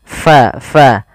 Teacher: pada lafal fa alirkan nafas kita karena fa sifatnya sifat hamas